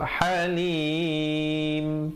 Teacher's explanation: disempurnakan bunyi mimnya dengan menutup mulut dengan rapat kadar 2, 4 atau 6 harakat